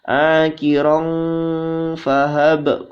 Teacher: Akiron fahab qalqala, ya, ba berharokat sukun dibaca qalqala